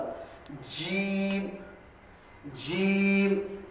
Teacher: का जो ताल जीन लगने से जीन की आवाज आती जीन जबान का दरमियानी हिस्सा और ऊपर के ताल लगने से · زبان کا درمیانی حصہ اور اوپر کے تعلق لگنے سے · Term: जीम की जो आवाज